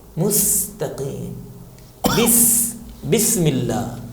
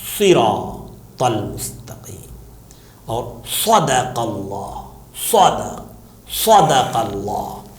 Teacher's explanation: سین کو پتلا پڑھنا ہے، صاد کو موٹا پڑھنا ہے